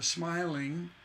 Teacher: you notice the ing hanging out there that's an unstressed single syllable unstressed that's a feminine ending